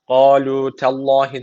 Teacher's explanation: Allah lafzı burada kalın okunacak çünkü öncesi harf üstten bağlanıyor ama t ince. Çünkü t ince bir harf.